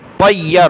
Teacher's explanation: रा के साथ, तौ या ज़बर तय्या, रा ज़बर यर, तय्यर, या को सख्त करेंगे तशदीद की वजह से